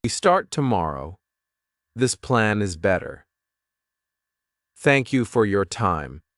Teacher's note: speak with falling tone to show confidence. Use short, calm sentences that feel complete.